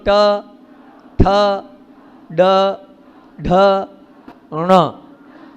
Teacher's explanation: ण का उच्चारण होता है मूर्धा को पीछे करो, जीभ को पीछे ले जाओ, वहां ण का उच्चारण होता है।